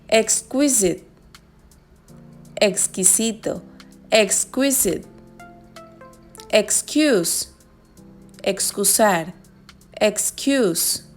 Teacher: Suena como KS al terminar una sílaba acentuada o cuando precede a una consonante